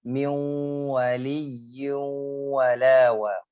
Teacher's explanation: Kalau dia masih ada gunahnya karena nun sukun itu huruf gunah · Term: naqis